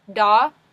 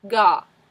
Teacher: Da, ga. Notice how when you say da, it's the front of your tongue, and when you say ga, it's the back of your tongue